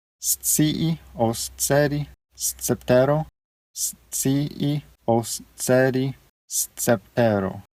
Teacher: It's a s sound, it's a TS. So when you pronounce the S and the C together, you pronounce it like an STS